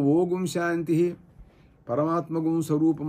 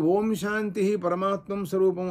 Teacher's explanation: నిషేధం చెప్పేస్తే గకారం పోయింది కానీ అనుస్వార పోదు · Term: కేవలానుస్వారం